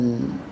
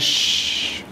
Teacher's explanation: في صوت بيجري لكن ما يجري زي إيه أش، وفي شيء من الحباس برضو بس ما الحباس زي إيه أط، لا في أل في جران لكنه جران إيه خفيف. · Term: الحروف البينية